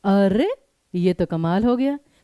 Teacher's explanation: बलाघात यानी उस चीज पे फोकस करना, जैसे कहते हैं कि अरे ये तो कमाल हो गया, तो अरे एक ही शब्द पे फोकस दिया और हल्का सा विराम लिया।